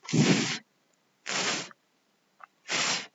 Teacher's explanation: participa el labio, en este caso el inferior, con los dientes superiores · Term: labiodentales